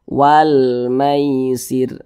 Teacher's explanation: dengan huruf mim hukumnya adalah alif lam qamariah atau izhar qamariah maka huruf lamnya dibaca izhar dibaca jelas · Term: izhar qamariyah